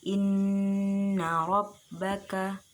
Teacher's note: Di situ ada huruf nun di lafadz inna. Huruf nun makharijul hurufnya yaitu ra'sul lisan, ujung lidah, dan sifat-sifatnya yaitu jahr, tawassut, istifal, infitah dan ilaq.